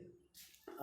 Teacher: आ क्या है, पश्च स्वर है